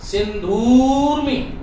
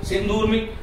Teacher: सिंधु ह्रस्व है, ऊर्मी में ऊ बड़ा है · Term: ऊ दीर्घ